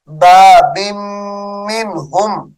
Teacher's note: تنوین کے بعد میم آ رہی ہے، غنہ کریں گے یہاں پر